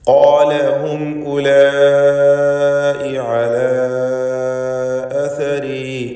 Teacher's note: ഹും എന്നതിലെ സാക്കിനത്തായ മീം ഇൽഹാർ ഷഫവി നൽകി മണിക്കാതെ വെളിവാക്കേണ്ടതാണ്. ഉലായി എന്ന പദത്തിലുള്ള അലിഫിൻ്റെ ദീർഘം മദ് മുത്തസിൽ വാജിബാണ്. · ഉലായി എന്ന പദത്തിലുള്ള അലിഫിൻ്റെ ദീർഘം മദ് മുത്തസിൽ വാജിബാണ്. നിർബന്ധമായും 4-5 ഹറക്കത്തിൻ്റെ അളവിൽ അതിനെ ദീർഘിപ്പിക്കണം.